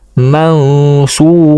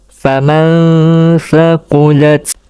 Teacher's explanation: Apabila nun sakinah ataupun tanwin tadi bertemu dengan salah satu daripada 15 huruf itu, maka nun sakinah dan tanwin dibaca dengan ikhfa serta dengung dengan kadar 2 harakat